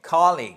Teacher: nous avons une accentuation sur la première syllabe